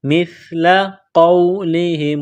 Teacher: سا کو پڑھتے وقت زبان تھوڑی سی باہر نکالیں گے